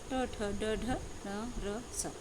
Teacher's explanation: जीभ की नोक मुंह की छत यानी मूर्धा को छूती है